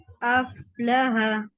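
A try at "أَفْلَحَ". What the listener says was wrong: ابھی آپ نے ہول رکھا ہے, تھوڑا سا اف ایسے ساؤنڈ آئے گا, اف.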